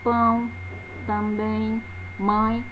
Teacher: no ditongo nasal, uma parte do ar escapa também pela cavidade nasal, não apenas na cavidade oral. É fácil de detectar apenas pelo som mesmo da vogal.